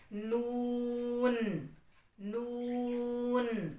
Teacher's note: Last میں نون کی sound کو واضح کرنا ہے، نو کہہ کے نہیں آگے چلا جانا، ٹھیک ہے، یہ غلط ہو جائے گا۔